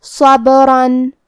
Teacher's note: کلمت صبرن یہاں با ساکن ہے تو ہمیں با کو قلقلہ سے پڑھنا ہے، اور قلقلہ کا معنی ہے حرف ساکن کو ہلانا، تو ہم یہ حرف کو ہلاتے ہوئے یہ کلمہ کو پڑھیں گے. صبرن یہاں حرف الرا ہے کیونکہ تنوین زبر کا ہے، لہذا ہمیں را کو موٹی آواز میں پڑھنا ہے